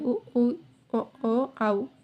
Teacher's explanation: இதழ்கள் குவிக்கிறனால வந்து உருவாகிற எழுத்துக்கள்.